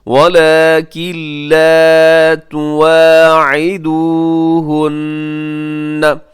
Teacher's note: ولیکن لا، ولیکن لا، ولیکن لکھا ہوا ہے، نون ساکن ہے، نون ساکن کے بعد لام ہے جو کہ حروف یرملون میں شامل ہے، اب یہاں پہ کریں گے ادغام لیکن بغیر غننے کے